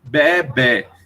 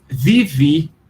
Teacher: O grego moderno vai ler isso, só que ele vai pronunciar, em vez de bé, que é o som que faz a ovelha, ele vai pronunciar vivi, porque o beta é pronunciado com som de V e o eta é pronunciado com som de I · o eta, que tem som de E no grego clássico, mas é pronunciado com som de I no grego moderno